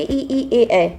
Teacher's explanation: अग्र स्वर मतलब कि जीभ के आगे के भाग का प्रयोग करके जो शब्द निकाले जाते हैं